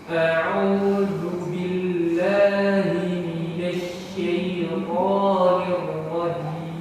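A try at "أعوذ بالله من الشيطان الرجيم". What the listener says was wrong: Bainiyah huruf lam. Billahi billah a'udzu billah, jangan bin langsung nempel. Bil a'udzu bil, tapi sifatnya apa? Bainiyah. Apa bainiyah? Berjalan sebentar. Billah jangan seperti itu. Sebenarnya sifatnya bainiyah.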